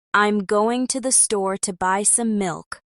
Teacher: the words going, store, buy, and milk are stressed